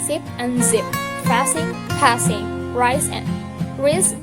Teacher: These are alveolar fricatives with the same place of articulation as T, D. There is kept to narrow passage along the center of the tongue, and the sound produced in comparatively intense F3.